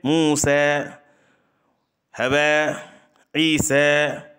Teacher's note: الف کو یا کی طرف اور فتحہ کو کسرہ کی طرف اتنا کم مائل کرنا کہ الف اور فتحہ کا غلبہ رہے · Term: امالہ صغریٰ